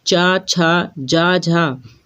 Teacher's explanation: चा, छा, जा, झा ये सभी आपके तालव्य से बोले जाते हैं।